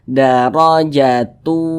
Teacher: kalau dia diwasalkan kita sambung bacanya tidak berhenti maka yang dibaca adalah yang huruf Ta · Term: huruf ta marbutoh